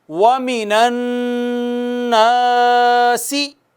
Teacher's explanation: غنہ کرتے ہیں، ایک الف کے برابر ناک میں آواز لے جا کر۔ اس کے بعد الف ہے، الف حرف مدہ ہے، اس کو بھی اتنا ہی کھینچنا ہے۔